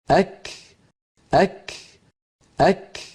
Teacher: کاف کا مخرج زبان کی انتہا سے ہے، لیکن ساتھ تالو کا نرم اور سخت حصہ بھی، یعنی جس جگہ ہڈی والا تالو اور گوشت والا تالو ملتے ہیں وہاں زبان کی انتہا کو لگائیں گے قاف کے مخرج کے قریب، تو کاف ادا ہوگا۔